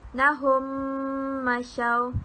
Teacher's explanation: Kita harus memastikan kedua-dua bibir kita ini dirapatkan dengan sempurna dan ditekan udara ke pangkal hidung untuk sempurnakan dengung mim sakinah dengan kadar 2 harakat.